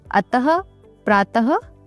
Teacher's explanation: अह को हम विसर्ग भी कहते हैं। विसर्ग का उच्चारण हल्के ह की तरह एक छोटे से झटके के साथ किया जाता है